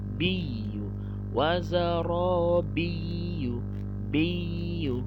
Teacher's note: Nah, di sini banyak salah. Biyu ditekan ya, karena ya-nya ada tasydid.